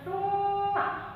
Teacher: ini bersifat dibaca gunnah dari hidung, ya, mendengung